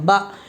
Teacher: زبر کو جلدی پڑھیں، تھوڑا بھی نہ کھینچیں، زبر کی آواز اوپر کو اٹھتی ہے، آواز اور منہ کھلے ہوتے ہیں۔